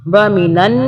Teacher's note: ایک نون کی آواز جو ہے وہ چھپی ہوئی ہوتی ہے اور پچھلے والے حرف سے ملا کے پڑھتے ہیں، اور ایک نون کی آواز جو ہے اوپر والے زبر سے پڑھیں گے کیونکہ نون کے اوپر تشدید ہے. تشدید کی وجہ سے نون کی آواز کو 2 مرتبہ پڑھیں گے. وَمِنَن نون الف زبر نا، یہ الف کی وجہ سے ہم نا پڑھ رہے ہیں، تھوڑا سا ایک الف کے برابر کھینچ کر.